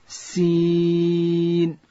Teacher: سین ادا کیږي د ژبې سر به د لاندې زامې د مخ دوه غاښو سره ورسره یو ځای د لوړې زامې د مخ دوه غاښونه